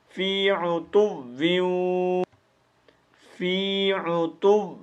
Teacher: فی عتو، واو نہیں پڑھنا، ٹھیک ہے؟ فی عتو غنہ کرنا ہے، ادغام مال غنہ